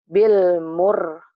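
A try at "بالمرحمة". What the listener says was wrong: Ayo, kenapa bil mur? Ini barisnya apa? U apa A?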